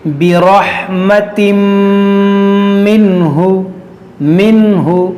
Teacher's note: یہاں پر دیکھیے کون سا قاعدہ ہے, نون ساکن کے بعد یہاں پر ہا ہے حروف حلقی, تو یہاں پر اظہار کا قاعدہ لگے گا, یعنی یہاں پر غنہ نہیں ہوگا